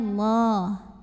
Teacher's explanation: lafadz Allah dibunyikan secara tafkhim sebab huruf sebelumnya yang mim berbaris fathah maka dibacanya ditebalkan bunyinya